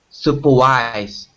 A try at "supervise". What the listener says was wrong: supervise. Get that V sound there. Supervise.